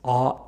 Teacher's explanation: bottom right corner of the chart we have the vowel ah when saying ah the highest point of the tongue has a low back position thus ah is a low back vowel